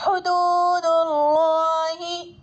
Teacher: اللہ کے لام سے پہلے دال پر پیش ہے تو اللہ کے لام کو پر پڑھیں گے. الف لام کے بعد حروف شمسی میں سے لام آ رہا ہے تو الف لام کو نہیں پڑھیں گے.